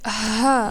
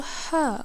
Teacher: Compare ha, which is light and soft, to ha, which comes from deeper down your throat.